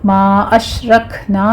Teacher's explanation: ما اشرکنا میں ما میں مد منفصل جائز ہے، اش میں شین پر تفشی ہوگی، آگے کاف پر ہمس ہوگا